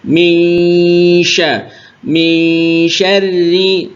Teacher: sudah samar tapi kurang tepat ya kalau yang di riwayat kita nunnya disamarkan ke syinnya jadi makhraj antara makhraj Nun dan makhraj syin